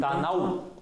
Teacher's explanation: У здесь не гласный. Он здесь как «в» идет. Он как «в» идет.